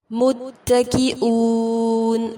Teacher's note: واو پر حمزہ کو واضح کریں گے، مد عارض کے ساتھ وقف کریں گے